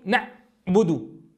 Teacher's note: والبعض يقول نعبد فيقطع صوت العين مشبها إياها بالهمزة، وكلاهما خلل.